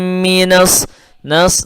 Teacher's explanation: suara nunnya langsung masuk kepada shad karena itu ada alif lam syamsiyah sehingga langsung masuk ke shad.